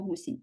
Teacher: перший склад у слові гусінь наголошений